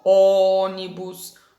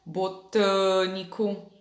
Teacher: tem acento que deixa a sílaba com som mais fechado